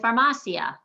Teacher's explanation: the i and the a stay together they're one sound